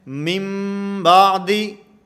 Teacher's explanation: اقلاب کا معنی کہ اگر نون ساکن یا نون تنوین کے بعد اگر با آ جائے تو وہاں پر اقلاب ہوگا۔ یہاں اقلاب کا معنی کہ نون کو میم سے بدل کر پڑھیں گے، نون کو میم سے بدل کر پڑھا جائے گا۔